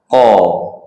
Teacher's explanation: Baik kita tengok sekali lalu makhraj dan sifat. Makhraj bahagian pangkal lidah ditekan kuat ke bahagian belakang anak tekak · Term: qaf